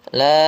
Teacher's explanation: Jadi kalau ada huruf hamzah terletak setelah bacaan biasanya mad tabi'i, itu dia panjangnya berubah menjadi 4 harokat atau kita namakan dengan mad jaiz